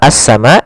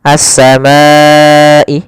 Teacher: Kemudian pada lafal as-sama di sini kembali lagi ada alif lam, yaitu alif lam syamsiyah, yaitu alif lam yang ditulis tapi tidak dibaca. Kemudian as-samai, sama seperti as-sama yang di awal.